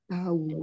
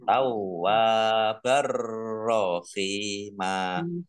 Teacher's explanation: Idgham bila gunnah masuk dengan tidak mendengung ya. Masuk ke huruf ro, roknya ditandai ada tasdidnya tetapi tidak mendengung.